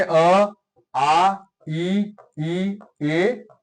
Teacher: अव्रतामुखी जिनकी होठों की आकृति अपेक्षाकृत गोल नहीं होती है